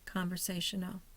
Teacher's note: We see a little slash at the bottom in front of the C. The first syllable is secondary. The third syllable, say, is primary. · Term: secondary stress